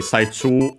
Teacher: Chinese compound accent on the first mora